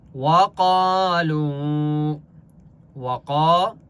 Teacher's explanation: قاف کو ایک الف کی مقدار کھینچ کر پڑھیں گے، اور قاف مستعلیہ میں سے اس لیے قاف کو موٹا پڑھیں گے